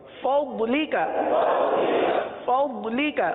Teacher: ضاد زبان کی کروٹ, زبان کی کروٹ اوپر کے داڑوں کی جڑ سے یہ ضاد کی ادائیگی ہوتی ہے